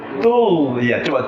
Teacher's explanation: Makhraj ghain itu naik langit, pangkal lidah ke langit.